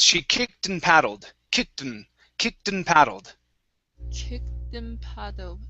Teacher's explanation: So actually, if I was to say this at full speed, okay, I combine the T. I do not say and. I say n.